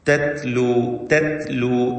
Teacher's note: താഇന് ഹംസ് എന്ന സിഫത്ത് പ്രത്യേകം കൊടുക്കണം. അതോടൊപ്പം ഷിദ്ദത്തും നൽകപ്പെടുന്ന അക്ഷരങ്ങളാണ്.